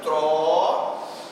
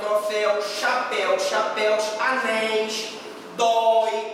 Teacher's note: a oxítona, a acentuação está na última sílaba. Se eu colocar aqui, olha, troféu, você repara que a acentuação está aqui, ó.